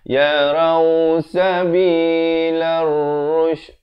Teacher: Ada lam syamsiah, sekali lagi lamnya tidak dibunyikan.